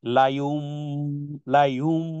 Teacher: নুন সাকিনের পরে বা আসলে সেটা মিম দ্বারা পরিবর্তন, তখন উচ্চারণ হবে, লিখতে হবে নুন, পড়তে হবে মিম। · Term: একলব